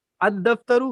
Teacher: الف کو دال کے ساتھ ملا کر پڑھا جا رہا ہے اور لام کا الگ سے اظہار نہیں ہو رہا ہے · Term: لام دال میں مدغم